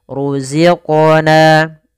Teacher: ada bacaan qalqalah, yaitu suara qofnya dipantulkan